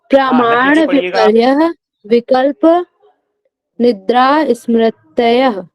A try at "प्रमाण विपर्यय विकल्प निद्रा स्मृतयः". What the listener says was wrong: ध्यान दीजिएगा, यह की जगह हा का उच्चारण कर रहे हैं आप, ये हा का उच्चारण नहीं होगा यहाँ पे, यह पढ़ रहे हैं तो ये का ध्यान दीजिएगा। अब बाद में इसको आप रिकॉर्डिंग पे देख लीजिएगा कहाँ पे आपकी गलती हो रही है।